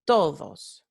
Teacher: Sílaba tónica es to, because that's the strongest syllable, right? Sílaba átona es dos, because it's a weaker syllable.